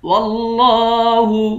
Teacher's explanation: لفظ اللہ کے لام کو موٹا پڑھیں گے، لام پر کھڑا زبر ہے، اس کو ایک الف کی مقدار کھینچ کر پڑھیں گے۔